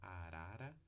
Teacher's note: A ponta da língua encosta ali nos alvéolos. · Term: TEP